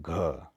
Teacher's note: घ जो बोला जाएगा वो आपका कंठ से बोला जाएगा